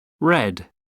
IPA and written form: rɛd (red)